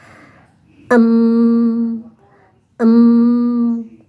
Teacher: mahraj yang keluar dari rongga hidung. Alkhaisum ada dua huruf.